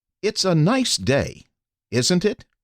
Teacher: Speakers saying something that they are almost certain the listener will agree with use a falling intonation.